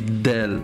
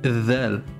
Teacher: On sort légèrement la pointe de la langue quand on prononce.